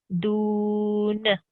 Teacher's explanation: a wow madda because you have a wow sakin, and before it you have an oo, and that oo pulls the sound forward for 2 seconds